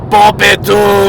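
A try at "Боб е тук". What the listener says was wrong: There's like a little separation between. It's not etuk as one word. It's like Bob, etuk.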